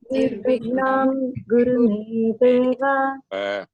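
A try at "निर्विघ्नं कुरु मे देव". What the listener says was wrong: It is Nirvignam Kuru, not Guru. We'll be learning when we study some consonants. It is Kuru, not Guru. Nirvignam Kuru Me Deva. A change in a letter will change in the meaning of the word. If it is Guru, it is teacher. Guru means teacher. Kuru is a verb. Nirvignam Kuru. Do. Kuru means do. Nirvignam Kuru.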